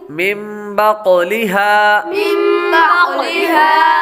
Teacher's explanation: بعد با حروف اقلاب میں سے آ رہا ہے، اس لیے نون ساکن کو میم سے بدل کر اخفا کریں گے، یعنی غنہ کر کے پڑھیں گے